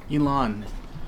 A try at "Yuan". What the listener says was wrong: So they've got it like phonetically Y-O-O-A-A-N. No, not E. You.